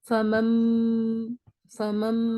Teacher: نون کو نہیں پڑھ رہے ہیں، میم ساکن کو پڑھ رہے ہیں. ہجے کریں گے تو فا زبر فا، میم میم زبر مم، فمم. · غننے کے ساتھ پڑھیں گے، آواز کو روک کر پڑھیں گے. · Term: اقلاب